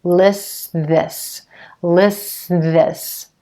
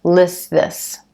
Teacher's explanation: I'm going straight from that s sound right into the th at the beginning of this and that T is just disappearing · when you have three consonant sounds together like this at the end of one word in the beginning of another that T sound is gonna fall away lists this lists this I'm going straight from that s sound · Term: vanishing T